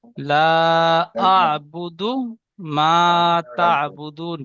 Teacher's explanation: দাল পেশ দু আছে, হারাকাত টান হবে না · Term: দালটা টান দেবেন না